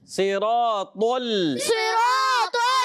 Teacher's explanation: طا کو موٹا رکھنا ہے, لام کو باریک رکھنا ہے, اور صاد بھی موٹا رہے گا, را بھی موٹا رہے گا.